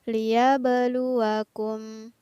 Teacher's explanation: Nah, di sini ada huruf ba yang bersukun di tengah ayat, maka berlaku hukum bacaan qalqalah. Huruf ba-nya harus dibaca memantul.